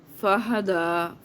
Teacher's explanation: ہا حلق سے آپ نے نکالنا ہے، حلق کے نیچے سے